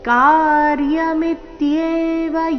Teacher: ಕಾರ್ಯ ಮೊದಲನೇ ಅಕ್ಷರ ಕ ದೀರ್ಘ ಮಿ ಮೇಲೆ ಆಘಾತ